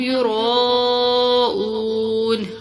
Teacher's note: را کو موٹا پڑھیں گے، اس کے ساتھ الف ہے اور چھوٹی مد بھی ہے، اس کو کھینچ کر لمبا کر کے پڑھیں گے.